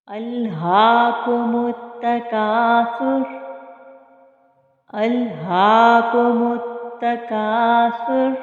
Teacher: اب یہاں پر آپ دیکھیں، ہا کے اوپر جو آپ کو کھڑی زبر نظر آ رہی ہے، اس کو ہم ایک الف کی مقدار کے برابر کھینچ کے پڑھیں گے، اور ہا کو ہم اقصی حلق سے ادا کریں گے کیونکہ حلقی حروف میں سے ہے